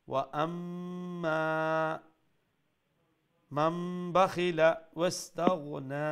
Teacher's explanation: মিম মুশাদ্দাদ গুন্না, এরপরে মিম আলিফ জবর মা, এক আলিফ লম্বা